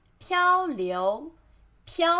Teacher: 漂 flat tone 流 second tone